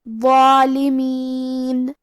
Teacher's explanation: ضو حروف تفخیم میں سے ہے، تو ہم یہ حرف کو بھاری آواز میں اور منہ پھلا کے پڑھیں گے، اور کیونکہ اس پہ مد الف ہے تو ہمیں مد الف کو بھی بھاری آواز میں پڑھنا ہے.